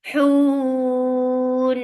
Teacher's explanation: Give tawassut on noon, because you're giving sukoon here because of this fakt. And this temporary sukoon has turned this two counts long vowel into four counts long